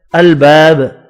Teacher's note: الباب الف مدہ ایک الف کی مقدار میں کھینچ کر پڑھیں گے. با ساکن پڑھا جائے گا وف کی صورت میں اور با ساکن پر قلقلہ بھی کریں گے